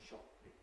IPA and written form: ˈʃɒppɪŋ (shopping)